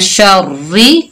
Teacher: ठीक है, मीम नून जेर मिन, शिन रा जबर शर, मिन शर, रा जेर री, मिन शर्री। देखिए रा मुशद्ददा है लेकिन नीचे जेर है तो रा को बारीक पढ़ा हमने